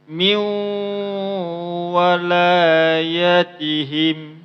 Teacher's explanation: Karena di sini ada hukum idgham bi gunnah, maka huruf wawnya dimasukkan ke nun. Maka jangan lagi dibaca min, tapi cara bacanya miu, bukan min.